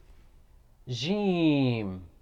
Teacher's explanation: jim is pronounced from middle section of the tongue and roof of the mouth